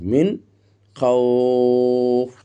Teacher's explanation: মিন খাওফ আবার দেখেন মধ্যে লিন ও সাকিন ডানে জবর এজন্য দুই থেকে তিন আলিফ পরিমাণ আমরা টানতেছি মদ্দে লিনকে আর এটাকে ইজহার করতে স্পষ্ট করতেছি মিন খাওফ এর সাথে সাথে